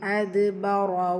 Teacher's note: ரா ஃபத்தா பெற்று வந்திருக்கு, வல்லினமாக ஓதணும்.